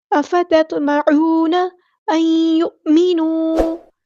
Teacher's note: نون ساکن کے بعد یا آ گیا تو یہاں پر ادغام ہوگا، ادغام مع الغنہ یعنی ادغام ناقص۔